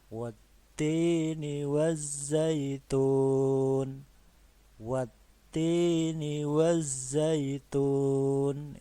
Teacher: Ini alif lamnya ini tidak dibaca, jadi langsung ke huruf yang setelah alif lamnya, langsung ke huruf ta. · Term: alif lam syamsiyah